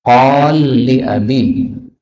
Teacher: qala li, lam ketemu lam, boleh idgham